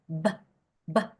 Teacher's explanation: están los labios cerrados y cuando el aire sale sale en una explosión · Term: explosivas